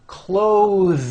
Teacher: notice how my tongue comes out in the middle of the word and the th sound is pushed out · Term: voiced th sounds